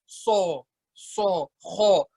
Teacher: Banyakan orang kalau baca so, baca kho, bibirnya itu bundar.